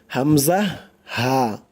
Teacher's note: 1 number মাখরাজ কণ্ঠনালীর শুরু হইতে উচ্চারিত হয়। 1 নাম্বার মাখরাজটাই কণ্ঠনালীর শুরু হইতে উচ্চারিত হয়, মানে গলার শুরু হইতে।